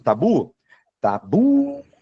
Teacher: Já na palavra tabu eu não tenho acento, mas quando eu chamo tabu, tabu, o bu segurou. Então bu é a minha sílaba tônica, mesmo que não tenha acento.